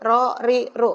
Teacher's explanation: Ro-nya tafhim, ri tarkik, upami ru tafhim